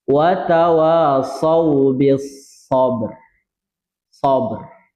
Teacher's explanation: Sabr. Ya, ra-nya ra tebal karena huruf sebelum sukun awalnya adalah berbaris fathah